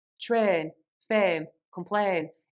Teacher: the long A sound in train, fame, complain, that is actually elongated and becomes train, fame, complain.